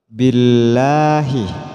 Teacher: Lam jalalah jatuh setelah harokat kasroh, jadi dibaca tipis. Billahi bukan billah.